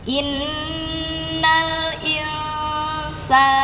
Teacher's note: Jangan lupa nun mati jumpa sin ikhfa ya. Jadi dilamakan, ditahan dulu sebentar. Innal insana, inna nun tasydid harus sama panjangnya dengan insana.